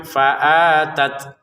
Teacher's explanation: Untuk faatat di sini hamzah fathah. Kemudian ada alif maka kita panjangkan faatat gitu ya. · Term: A-nya panjang